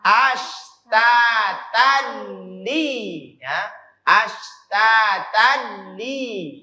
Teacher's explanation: Dihilangkan ininya, tanwinnya dihilangkan, dileburkan ke huruf lam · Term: idgham bila guna